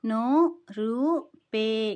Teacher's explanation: ఈ నామములో నో రూ పే ఇవి దీర్ఘాలు ఉన్నాయి, అంటే మనము సాగదీసి పలకాలి.